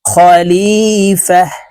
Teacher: গোলটা ওয়াকফের ক্ষেত্রে হার উচ্চারণ করব এবং হা কে সাকিন করে ফেলবো